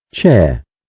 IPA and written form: tʃer (Chair)